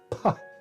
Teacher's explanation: English tends to follow the bilabial plosive with a puff there, which is expressed by a tall a small superscript h.